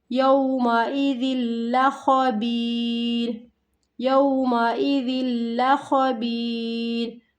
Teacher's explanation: ذال کو لام کے ساتھ ملانا، ادغام بلا غنہ، ادغام کے معنی ملانا بلا غنہ، غننے کے بغیر۔